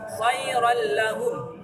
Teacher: Idgham bila gunnah. Cara membacanya memasukkan tanpa berdengu.